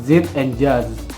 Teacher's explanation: air is forced through tongue and alveolar ridge